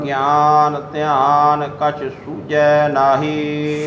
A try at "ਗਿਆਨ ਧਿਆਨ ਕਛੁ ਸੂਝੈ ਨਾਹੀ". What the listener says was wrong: ਸੂਝੇ ਨਹੀਂ ਕਹਿਣਾ ਸੂਝੈ, ਗਿਆਨ ਧਿਆਨ ਕਛ ਸੂਝੈ ਨਾਹੀ, ਤੈਨੂੰ ਨਿਰਗੁਣ ਸਰੂਪ ਦਾ ਮਹਾਰਾਜ ਕਹਿੰਦੇ ਗਿਆਨ, ਸਰਗੁਣ ਦਾ ਧਿਆਨ ਆਦਿ ਕੋਈ ਵੀ ਇਹ ਸੋਝਦਾ ਦਿਖਦਾ ਹੀ ਨਹੀਂ ਹੈ।